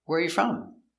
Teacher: Put the stress on the first word. Where is the important word. · intonation goes down at the end